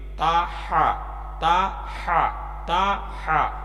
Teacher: ہا جو ہے یہ حلق سے نکلنے والا حروف ہا ہے، ہا حلق سے نکلتا ہے